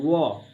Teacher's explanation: दंतोष्ठ का मतलब होता है दांत और ओष्ठ दोनों मिलके जो है ना वो का उच्चारण करेगा